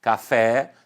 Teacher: café, sílaba tônica fé, sílaba átona cá